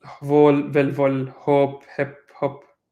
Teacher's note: So you see the O becoming an I, and then now to a short O very commonly.